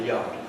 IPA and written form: jɑːrd (yard)